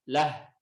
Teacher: kalau mad silah sughra ketika waqaf malah tidak dibaca.